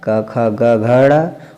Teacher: कंठ और निचली जीभ के स्पर्श से बोले जाने वाले वर्ण क्या होते हैं, कंठाय होते हैं।